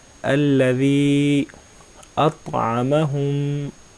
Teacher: یا کے اوپر چھوٹی مد ہے تو اس کو کھینچیں گے، بڑی مد کو زیادہ کھینچتے ہوتے ہیں اور جو چھوٹی مد ہے اس کو اس سے تھوڑا کم.